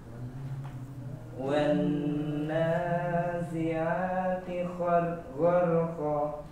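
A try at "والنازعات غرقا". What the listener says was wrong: Nanya kurang, setelah nanya nunnya ditengungkan, dipanjangkan. Sekali lagi Pak.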